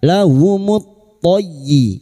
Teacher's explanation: masuk ke huruf ya yang bertasdid hanya masuk tanpa ditahan lama-lama